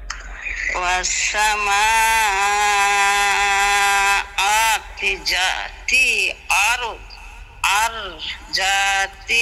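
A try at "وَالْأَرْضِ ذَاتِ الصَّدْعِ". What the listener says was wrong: কি কয়? কি কয়? ওয়াল আরদি দি কইবে কেডা? ওয়াল আরদি।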